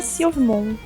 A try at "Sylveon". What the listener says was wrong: Silvemon? É Digimon? É Sylveon. Você falou Silvemon, pra mim é o Digimon. Digimon que termina no Mon. É Sylveon.